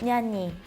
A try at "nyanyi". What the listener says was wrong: I think like at the behind, like the nya was okay, but the ni, a lot of people skip the y. It's just like nyanyi, kind of like nyani. Yeah, nyanyi.